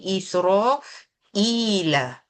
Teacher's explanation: Isra ila I tu dua harakat bukan mad asli tapi mad badal